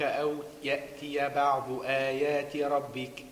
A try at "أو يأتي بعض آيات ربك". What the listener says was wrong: ربك را فخم